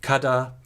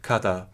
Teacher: where Old Avestan has a voiced stop between vowels in kada, Young Avestan has a fricative